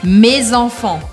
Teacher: Vocês estão vendo que eu não falo mes enfants. A gente aqui pronuncia excepcionalmente o S de me, porque eu grudo com o som da próxima palavra, que está começando com uma vogal. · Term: liaison